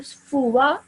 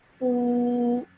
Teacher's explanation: Okay, so what happens is this vowel has now become vowel madda. So you have to now prolong it or stretch it for 2 seconds. Okay, so at the end, instead of fuwa at the end, it would be fu, like that.